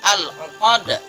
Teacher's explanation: Jangan sampai kita merubahnya menjadi huruf u atau huruf hamzah, tetapi di situ ada huruf ain yang harus kita keluarkan dari tengah-tengah tenggorokan. Dan di akhir ayat al-uqad itu juga ada qalqalah kubra.